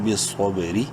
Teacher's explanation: را زیری باریک پڑھیں گے زیر کی وجہ سے